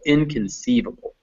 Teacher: the in actually does get secondary stress